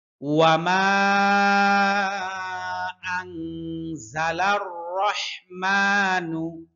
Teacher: ওয়াও ঠোঁট গোল হবে, হ্যাঁ দুই ঠোঁট গোল হবে। মা 3 আলিফ টান।